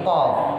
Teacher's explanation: kalau kita ngucap qaf, Pak, pangkal lidah ada di atas, ujung lidah di bawah